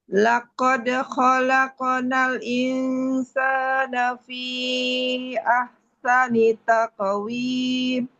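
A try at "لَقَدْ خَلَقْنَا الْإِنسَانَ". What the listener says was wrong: Ya, L-nya, lam matinya, jangan buru-buru. Laqad khalaqnal in, jangan nal in, oke? Nal in, al in. Laqad khalaqnal in.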